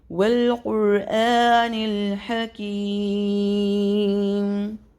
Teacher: اب چونکہ یہاں آیت ختم ہو رہی ہے، ہم نے یہاں پہ وقف کرنا ہے میم پہ، تو یہاں اس یائے مدہ پہ ہم مد عارضی لگائیں گے، اس کو 3 الف تک ہم پر کر سکتے ہیں